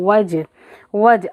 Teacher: واو ہونٹوں کو گول کر کے پڑھیں گے